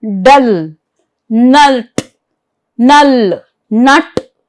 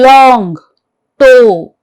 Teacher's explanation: Dental alliteration. This is consonant articulated with the tongue against the upper teeth